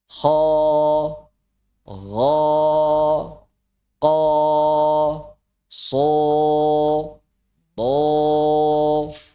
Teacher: Yang pertama ada cekungan di tengah lidah. Yang kedua ada pangkal lidah yang naik ke arah langit-langit. Dan yang ketiga tekanan pada faring. Nah, tiga poin ini masti selalu ada saat mengucapkan huruf tebal.